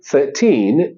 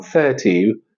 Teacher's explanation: 13 is totally different from 30 just because of the stress of the word and one small n Sound at the end